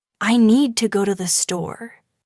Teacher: The stresses are on need and store